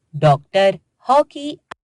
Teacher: औ की ध्वनि आ और ओ के बीच की है। इसका प्रयोग केवल अंग्रेजी भाषा के शब्दों में ही किया जाता है, जैसे डॉक्टर, हॉकी।